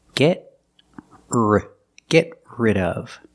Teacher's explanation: Link the sounds. Link the stop T to the R.